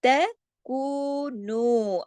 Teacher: اس کے اوپر آپ دیکھیے چھوٹی سی مد بھی ہے نا، اس کا مد کا بھی حق ادا کرنا ہے، تکو، تو کو جو ہے یہ 2 حرکات، لیکن نو جو ہے یہ زیادہ